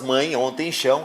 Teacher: as palavras mãe ontem chão realmente apresentam ditongos nasais